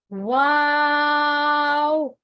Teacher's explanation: इसमें आप होंठों को गोल कर रहे हैं और इस तरह की शेप बन रही है, ये भी होंठों वाले हरूफ में से है।